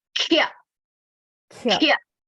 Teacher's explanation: You have to stress on kha. Mahaprana.